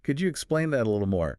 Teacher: My voice goes up a little with interest.